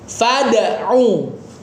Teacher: Qalqalahin huruf dalnya terus siap ke makhraj selanjutnya.